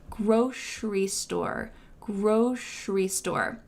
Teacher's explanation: I say grocery with a sh sound in the middle